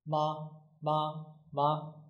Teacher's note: It doesn't have a tone. It's a neutral tone. So we pronounce it quickly and shortly.